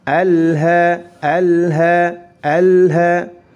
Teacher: Alha hanya dibaca panjang 2 harakat karena dihukumi mad tabi'i.